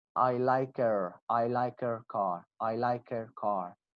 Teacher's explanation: We do not pronounce H.